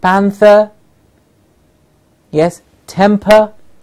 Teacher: R at the final position, the r gets a vowel sound.